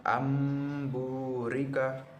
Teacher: Dikatakan iqlab apabila nun sukun atau tanwin bertemu dengan huruf ba, maka berubah menjadi mim disertai dengan dengung.